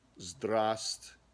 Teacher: you don't say that first v at all